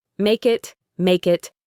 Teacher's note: The next two words make it link together beautifully. The K sound at the end of make connects to the I in it.